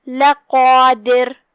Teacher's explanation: قاف کی ادائیگی زبان کے جڑ اور تالو کے نرم حصے سے ہے، یہاں بھی قاف کو ہم تفخیم سے ادا کریں گے کیونکہ وہ حروف تفخیم میں سے ہے۔